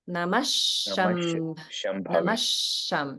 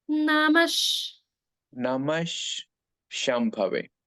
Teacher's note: So Namaha ends in Visarga. And when Visarga is followed by a Sha sound like Shambhave, the Visarga is pronounced as Sha. So it actually becomes Namasham.